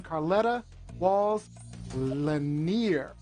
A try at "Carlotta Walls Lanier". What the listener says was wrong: Carlotta Wall Lanier. You said Carletta.